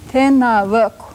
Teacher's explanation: whispered vowel on the end, and all of this is a suffix meaning dual. That means two men.